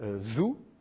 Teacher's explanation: c'est une interdentale primitive, qui s'écrit comme ça, Zou.